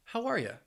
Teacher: you're going to blend those first two words, how are, and then that last word, you, is going to have that schwa, that ya, how are ya?